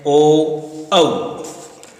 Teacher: कंठ ओष्ठ कंठोष्ठ्य, और उच्चारित होने वाले स्वर हैं ओ, औ